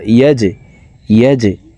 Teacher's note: আলম ইয়াজআল, জিম কলকলার হরফ নিচের দিকে ধাবিত করে ধাক্কা দিয়ে উচ্চারণ করব।